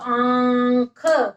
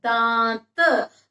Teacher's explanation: आवाज मुंह से भी आती है और नाक से भी, दोनों से आती है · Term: अनुनासिक